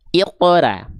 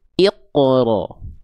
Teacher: Huruf ro itu ketika berharokat baris atas atau fathah itu akan terdengar seperti vokal O. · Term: tebal